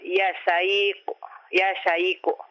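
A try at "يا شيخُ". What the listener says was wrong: Ya syekhu. Nah, itu kha. Kha. Kha. Khu. Ya syekhu.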